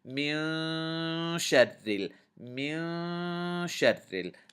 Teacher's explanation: It will let you know that you're supposed to do ikhfa. You're supposed to hide the noon in your nose a little bit.